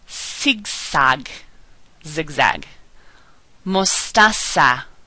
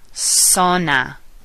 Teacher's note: b Bo Z Sounds like the letter S as in Sam we never make the buzz sound like a bumblebee does we don't do that in Spanish okay so just remember it sounds like an S soft sa